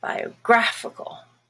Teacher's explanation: in biographical, which is the adjective, it changes to become the A that's stressed. And now the A is no longer a schwa, but it is black, biographical.